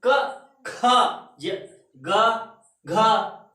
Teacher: जब आप दूसरा और चौथा अक्षर बोलेंगे तो वायु आपके मुख से ज्यादा निकलती है, और जब आप पहला, तीसरा और पांचवा अक्षर बोलते हैं तो उसमें वायु कम निकलती है। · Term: महाप्राण